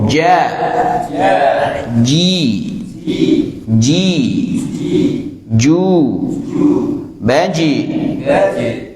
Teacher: bagian tengah lidah bersentuhan dengan langit-langit bagian atas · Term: huruf Jim